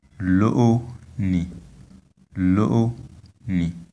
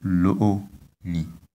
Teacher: on the two vowels O, we have high tones